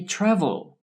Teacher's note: Yes, the first syllable is stressed, the TRA, travel. The last syllable with L at the end is not stressed.